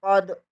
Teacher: दाल साकन है, यहाँ पर कलकला होगा